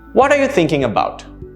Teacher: However, what are you thinking about? My intonation went down towards the end.